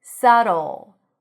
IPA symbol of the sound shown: ɫ